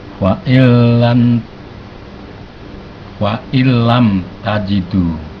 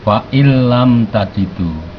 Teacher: ini nun mati bertemu lam, kita tidak mendengung karena bilahunah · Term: idgham bilahunah